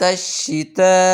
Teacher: یہاں 5 الف مقدار مد ہوگی، بڑی مد ہے ، اس کو 5 الف مقدار کھینچیں گے، یعنی کہ 5